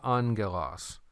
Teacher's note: By the way, on this word angelos, this is alpha, gamma, gamma. When you have these two gammas right there together, it's not GG, but it's pronounced NG. So that's why you heard me say angelos.